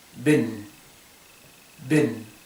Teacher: esta I corta estaría entre medio, estaría en un lugar intermedio entre E e I